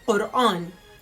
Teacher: your tongue position is from the back, is lifting up, touching the upper palate of your mouth, sticking there for a bit and then coming out. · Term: the letter qaf